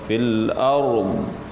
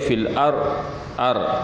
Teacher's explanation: kita kalau nak berhenti tu biar dengar, biar bunyi ra, biar bunyi juga dad.